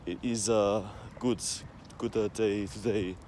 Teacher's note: Italians will often put little schwa sounds in between words in English.